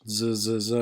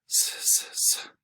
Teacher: So in Spanish we don't buzz the Z like we do in English